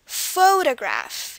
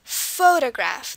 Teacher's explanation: emphasis at the beginning which is not present in the middle or the end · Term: stress